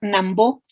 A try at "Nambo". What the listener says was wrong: No, Nambo, nada más. Nambo, Nambo, no, sin acento. No, no tiene acento, es Nambo.